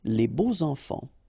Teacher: even if you've got this X, well, phonetically it will be like Z, so like if it would be an S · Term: liaison